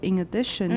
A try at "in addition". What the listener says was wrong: This is a very, very Taiwanese kind of linking. In addition. Inga, inga, inga. Remember, i-na, i-na.